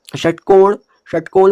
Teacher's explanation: हमारी जो जीभ की नोक है ऊपर जो मूर्धा हो रही है उसको छू रही है। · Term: षट्कोण वाले स